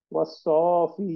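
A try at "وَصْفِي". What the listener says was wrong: না না, টান হবে না, অসয়ফি।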